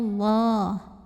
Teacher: dibunyikan secara tafkhim karena huruf sebelumnya yang wau ini barisnya fathah maka cara bacanya ditebalkan pangkal lidah kita angkat bunyinya Allah lalu Alif lamnya namanya alif lam syamsiah karena alif